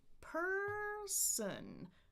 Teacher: I've got 2 syllables, but this time the stress is on the first syllable. So it's da-da, person.